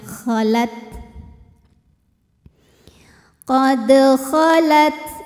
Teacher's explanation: Nah untuk ta Yang sukun keluar anginnya belakangan untuk ta yang hidup keluarnya bersamaan dengan keluarnya suara tatiu kalau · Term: hams